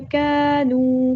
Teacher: کاف کو باریک ادا کرنا ہے، کونو نہیں کرنا ہے، کانو، نو پہ ہم نے واو مدہ آیا ایک الف کے برابر لمبا کرنا ہے ، کانو، کا اور نو کو دونوں کو برابر لمبا کرنا